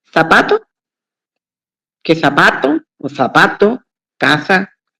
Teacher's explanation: pronunciamos la C, la S y la Z igual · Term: ceseo